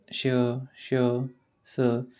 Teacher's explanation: श स यांचा उच्चार हे वायूच्या घर्षणात होतो म्हणून त्यांना महाप्राण असे म्हणतात यांनाही महाप्राण म्हणतात कारण काय आहे जेव्हा श आपण जेव्हा बोलतो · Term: उष्मे